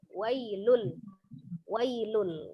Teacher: Ketika dia disambung maka madlin itu menjadi pendek bunyinya ya. Jadi dia berbunyi wailul saja, tidak wai seperti itu ya, maka dia dibaca pendek wailul.